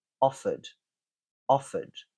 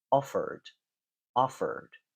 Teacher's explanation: in my accent it finishes with a vowel sound but in an American accent it would be more like offer